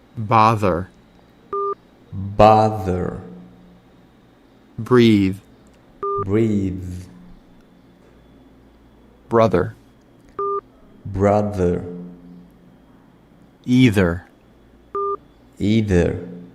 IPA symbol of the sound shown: ð